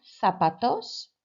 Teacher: the pronunciation of the ZA sounds like a THA